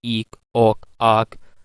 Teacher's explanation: So in spelling, actually a glottal stop is sometimes not visible, so but it happens at sometimes at the beginning of the word, like eek, ok, ark, and these are pronounced with glottal stop at the beginning of the vowel